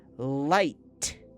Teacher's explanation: Tongue tip on the roof. Then it drops. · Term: L sound